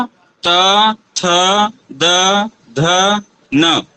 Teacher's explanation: पाएंगे तो त थ द ध न इसका उच्चारण करने पर हमारी जो जीवा है वह दांत के पास जा रही है